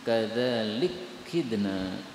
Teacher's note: Ini kaf ketemu dengan kaf boleh idgham menjadi kadzalik kidna.